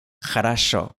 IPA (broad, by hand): xə.rɐ.ˈʂo